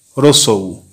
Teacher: হ্রস্বউ উচ্চ, পশ্চাৎ, বর্তুল, সংবৃত, কণ্ঠ।